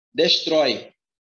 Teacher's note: A sílaba mais forte é o trói. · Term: oxítona